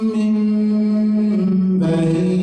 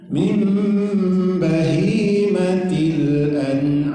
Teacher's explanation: Nun mati berjumpa dengan ba iqlab, itu dibalikkan menjadi huruf seperti huruf mim karena mim dan ba itu satu makhraj, yaitu bibir atas berjumpa dengan bibir bawah